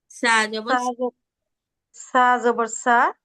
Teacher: জিহ্বার আগাটা আমরা উপরে 2 দাঁতের আগার সাথে লাগাবো। আর যখন জিহ্বার আগাটা উপরে 2 দাঁতের আগার সাথে লাগাবো, তখন আমাদের জিহ্বাটা একটু বের করে রাখবো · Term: পাতলা উচ্চারণ